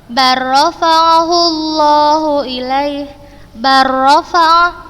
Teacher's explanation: huruf lam sukun, kemudian setelahnya huruf ro berharokat, maka kita bacanya langsung memasukkan ke huruf yang kedua tanpa gunnah. Sudah contohkan barrafa'ahullahu ilaih, barrafa, langsung sudah masukkan ke huruf ro-nya, barrafa. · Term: idgham mutaqarribain